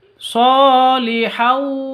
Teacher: Tanwin bertemu dengan wawu. Cara bacanya masuk ke wawu disertai dengung 2 ketuk. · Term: idgham bi gunnah